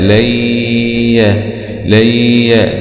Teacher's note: نون سكون مع الإدغام في الياء المفتوحة، إدغام بغنة لوقوع الياء بعد النون، والياء من حروف كلمة ينمو.